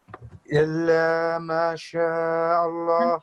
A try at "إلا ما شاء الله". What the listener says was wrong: No, still 1 second. إلا ما شاء الله. This is a vertical fatha, which means this is also a fatha like this. However, it's been turned like this way. When that happens, then instead of this 1 second, it will turn into a 2 seconds fatha.